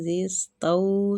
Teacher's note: زال کو نرمی کے ساتھ سین کے ساتھ ملائیں گے، سین سیٹی والا حروف ہے